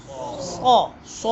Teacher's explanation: دونوں دانتوں کے درمیان سے، کناروں سے ادا ہوتے ہیں، ٹھیک ہے، سیٹی کی طرح تیز آواز نکلتی ہے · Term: حروف صفیریہ